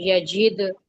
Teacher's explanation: जीम के नीचे कसरा है उसको दाल से मिलाना है तो कलकला होगा